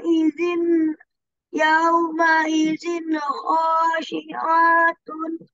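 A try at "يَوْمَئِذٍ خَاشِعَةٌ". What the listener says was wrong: Tuh, masih panjang A-nya. Khosi'atun, enggak. Kalau begitu berarti ada motobi-nya. Itu enggak ada, kan? Enggak ada alif di situ. Yauma izin khosyi'atun. Yauma izin khosyi'atun.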